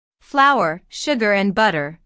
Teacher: this is a list so there are short pauses between each item